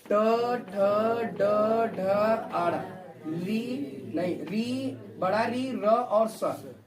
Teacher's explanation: ये सब वर्ड किससे बोले जाते हैं आपके, मूर्धा।